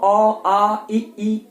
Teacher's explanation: कहीं रुकावट पैदा नहीं हो रही, वायु सीधे बाहर आ जा रही है, कोई रुकावट पैदा नहीं होती मुंह में वायु के लिए। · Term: स्वर